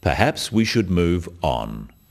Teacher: The first one, perhaps we should move on, is phrased as a suggestion, but it is said in a firm way with a falling intonation at the end